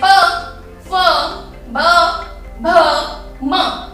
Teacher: ओष्ठ यानी कि होंठ, हमारे होंठों से छूकर स्पर्श होकर जब बाहर निकले तो उन्हें हम बोलते हैं स्पर्श व्यंजन